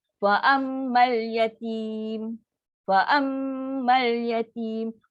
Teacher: Sukun pertama mat asli tu tidak dibaca dengan lafaz dua harakat ketika wasal. Dibaca tanpa mat. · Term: pertemuan dua sukun